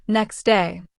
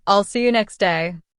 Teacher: Elision is when we drop a sound completely. For example, next day might sound like next day. The T disappears.